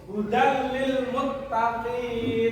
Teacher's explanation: Jika nun mati bertemu dengan lam atau ro, maka hukum bacaannya adalah idgham bila gunnah. Memasukkan tanpa berdengung, panjang bacaannya satu harokat atau satu ketukan atau satu alif.